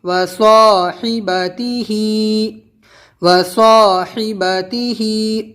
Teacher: واو زبر وا، صاد الف زبر صا، وصا، حا زیر حی، وصاحی، با زبر با، وصاحبا، تا زیر تی، وصاحبتی، ہا کھڑی زیر ہی، وصاحبتیہ، وصاحبتیہ، ہا کی آواز نیچے، ہی بالکل زیر کی آواز نیچے جائے گی